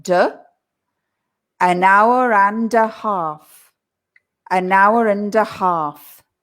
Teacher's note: the d from the and pushes to the ah